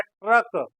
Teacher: जैसे हम उदाहरण के रूप में बोल रहे हैं ट्रक तो ट्रक का उच्चारण जब हम कर रहे हैं तो यहां पर ट का उच्चारण आधे रूप में हो रहा है और र पूरे रूप में हो रहा है लेकिन जब लिखेंगे तो ट को हम पूरा लिखेंगे और र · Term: ट आधा है, र पूरा